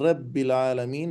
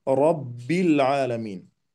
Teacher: وإذا كان ساكنا فإنه يكون تابعا لما قبله من الأحرف، فإن كان الحرف الذي قبله مفتوحا أو مضموما كان مفخما، وإن كان مكسورا كان مرققا. فحرف الراء هنا مفتوح فحكمه التفخيم